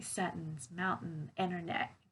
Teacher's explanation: native speakers use the pronunciation of the glottal T